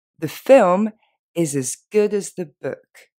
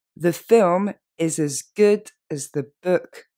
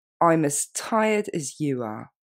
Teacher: quand as est pris au milieu d'une phrase, on n'a pas trop tendance à l'accentuer, et donc on n'a pas vraiment tendance à le prononcer as, sauf si on voulait exagérer.